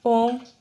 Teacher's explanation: प्लुत स्वर ऐसे स्वर जिनका उच्चारण दीर्घ स्वर से भी ज़्यादा समय लेता है। ऐसे स्वर जिनके उच्चारण में हमें दीर्घ स्वर से भी ज़्यादा समय लगता है।